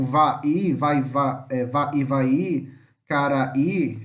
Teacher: O i em Guarani é pronunciado separadamente. Ele nunca vai fazer parte de uma outra sílaba assim, porque ele sempre é uma vogal forte. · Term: hiato